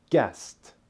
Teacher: guessed which ends with the T sound